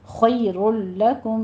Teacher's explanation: خی میں خا کو پر پڑھیں گے